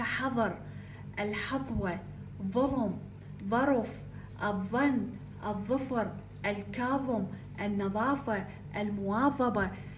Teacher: هسه و تجربون انه اللسان يخرج من الفم حظ حفظ حفظ لاحظوا اللسان عند النطق يخرج من الفم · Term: الظاء